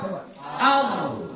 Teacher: yang lamnya itu sudah mulai ditafkhimkan dengan mengangkat pangkal lidah